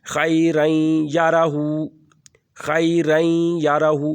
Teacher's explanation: ظاہراً تو یہ لکھا ہوا ہے خیرن یارہو، لیکن ہم اس کو جب ادغام کریں گے تو یہاں پر نون کی آواز ختم ہو جائے گی، غنہ میں بدل جائے گی۔ خیرن یارہو، خیرن یارہو، رین، رین بن جائے گا، رن نہیں پڑھیں گے۔